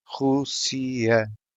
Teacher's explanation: This is a three-syllable word with an accent on vowel U, indicating that that is the stressed syllable. Vowels U and I always sound the same, and vowel A is shut.